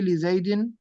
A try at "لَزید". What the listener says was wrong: نہیں نہیں، یہ لام ابتدا ہے نا، لام ابتدا ہمیشہ مفتوح ہوتا ہے.